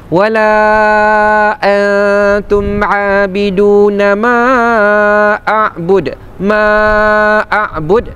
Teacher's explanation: Ada huruf alif berjumpa dengan hamzah dalam dua kalimah. Hukumnya mad jaiz munfasil. Dibaca dengan kadar empat harakat. Dan ketika kita wakaf di situ, a'bud de. · antum nun mati berjumpa dengan huruf ta, hukumnya ikhfa hakiki. Cara bacaannya dengung dengan kadar 2 harakat.